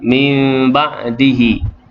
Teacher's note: nun mati bertemu dengan ba, hukum dia iqlab. Dengung sekadar 2 harakat. Baik, atas nun itu mim.